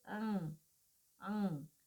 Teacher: यहाँ पर क्या है, जो श्वास वायु है वो नाक की तरफ चली जाती है, यानी इस ध्वनि के उच्चारण में जो श्वास वायु है वो नाक से ही निकलती है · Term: नासिक्य स्वर